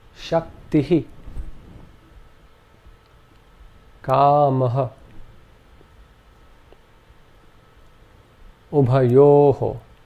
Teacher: The second ornament is called the visarga, and this is simply an aspirate, where the breath is expelled in a very short burst along with the preceding vowel sound